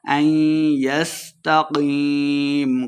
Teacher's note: قاف کو موٹا پڑھیں گے، یا مدہ ہے، دو حرکات اس کو لمبا کر کے پڑھنا ہے اور آخر پہ ہم نے وقف کا دینا ہے.